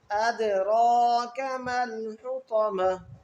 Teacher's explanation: وَمَا أَدْرَاكَ یہاں پر دال پر جو ہے قلقلہ ہوگا، تو دال کو تھوڑا ظاہر کر کے پڑھیں گے اور را کو پر پڑھیں گے موٹا کر کے